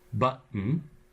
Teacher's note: There the T is replaced by the glottal stop. It is again between two vowels, but with the extra condition that the last vowel is an N, which is syllabic.